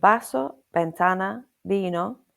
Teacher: The pronunciation is that usually a V is pronounced in the same way as a B in Spanish, like a soft B at the beginning of bed or best. However, you might occasionally hear it sound more like a V depending on the speaker.